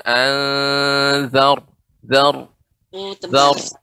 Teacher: Ro ketika disukunkan dibaca dengan tebal karena sebelumnya zal berharokat fathah.